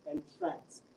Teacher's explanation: in the verb form, it is stressed on the second syllable